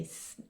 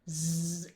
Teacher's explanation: when you say s, turn the motor on, z, and it turns into the sound of z